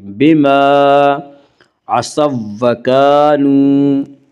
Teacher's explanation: وا مدہ وہ واو جو ساکن ہو اس سے پہلے پیش ہو، وا مدہ کو ایک الف کے برابر کھینچ کر پڑھیں گے